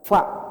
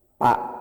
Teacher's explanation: huruf fa itu hanya 1 bibir yang aktif, bibir bawah. Bibir bawah bagian dalam dengan gigi atas.